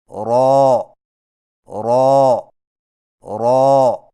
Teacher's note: را کی ادائیگی میں زبان کی نوک کی پشت کو اوپر والے دانتوں کے مسوڑوں سے لگا کر موٹی آواز میں پڑھیں